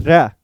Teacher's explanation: जब भी आप र का उच्चारण करते हैं तो आपको जो आपकी जीभ है वह लुढ़कती नजर आती है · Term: लुंठित व्यंजन